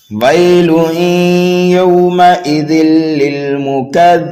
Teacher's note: وقف کر دیا آیت نمبر 10 پر تو یہاں پر نون کو ساکن کر دیں گے, یہاں پر بھی وقف بالاسکان ہو رہا ہے اور مد عارض کا قاعدہ بھی پایا جا رہا ہے.